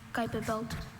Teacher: Some viewers at home might have heard his T sound more like a D.